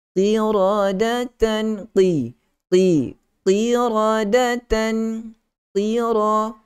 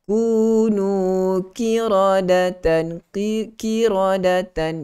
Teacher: huruf qaf ini ada sifat isti'la dan dia berbaris di bawah. Kadang-kadang baris bawah ni kita lemah untuk nak sebutkan sifat yang ada, sifat yang kuat yang ada pada huruf tersebut.